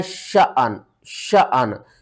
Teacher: الف کو جھٹکے کے ساتھ پڑھنا ہے